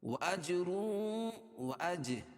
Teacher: جیم پر قلقلہ ہے کیونکہ جیم پر جزم ہے